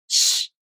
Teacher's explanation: you bring the front part of the tongue close to the place of articulation and the place of articulation is the back of the gum ridge, not the front. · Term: [ɕ] consonant sound